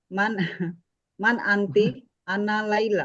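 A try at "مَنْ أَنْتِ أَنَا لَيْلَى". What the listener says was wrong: Man anti, ti ini kok jadi panjang begitu gitu maksudnya. Berhentinya di nun itu. Man anti. Kan nggak berasa panjang kalau begitu.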